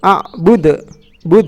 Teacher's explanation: Karena di sini ada huruf qalqalah dal yang dimatikan karena wakof ya, karena ada tanda baca berhenti. Nah, ini namanya qalqalah. Berarti dibaca harus memantul. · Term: qalqalah kubro